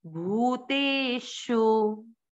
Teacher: भ पे बड़े ऊ की मात्रा लंबा खींचेंगे